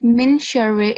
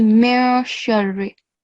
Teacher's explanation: Ikhfa, which means that the sound of noon has to be hidden. So it's silenced.